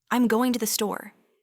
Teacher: Notice how going to often transforms into gonna, and the entire phrase just glides off your tongue.